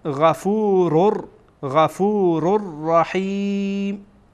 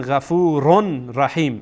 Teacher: بناهن میخوانین غفور غفور رحیم. غفور رر، یعنی را با رای دیگه داخل میشه، وصل میشه با هم دیگر، ادغام میشه. نمیخوانین غفورون رحیم.